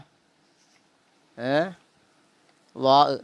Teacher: നാവിൻ്റെ തല മേലെ മുൻപല്ലിൻ്റെ താഴെ തലയിൽ ചേർക്കണം.